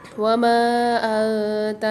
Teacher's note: نون ساکن کے بعد افعال غنہ کے 15 حروفوں میں سے تا آ رہی ہے، غنہ کر کے پڑھیں گے۔